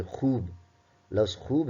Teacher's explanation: واو معروف، جب واو اپنی پوری کی پوری آواز دے